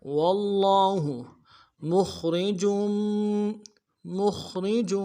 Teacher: میم کو خا کے ساتھ ملانا ہے، خا کو موٹا کریں گے، را کو باریک کریں گے